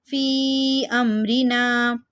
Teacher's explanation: 3 الف کے مقدار کھینچ کے پڑھیں گے مد منفصل کو